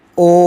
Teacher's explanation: प्लुत स्वर हो गया, क्योंकि ओ का जो साउंड है वो खिंचकर लंबा हो रहा है